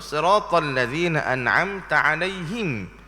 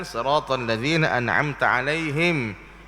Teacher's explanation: Him itu dah jadi imalah sebenarnya. Maka dia tak boleh baca gitu kerana di situ bukan tempat dia untuk imalah.